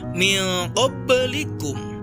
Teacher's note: huruf ba disukun di tengah kalimat dan dibaca memantul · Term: qalqalah sughra